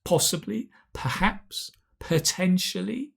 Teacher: Make sure you've got that nice p, that aspirate P we have in English.